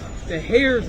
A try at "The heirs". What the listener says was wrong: The H is silent. Continue.